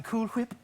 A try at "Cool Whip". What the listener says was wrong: You're putting a lot of emphasis on the H.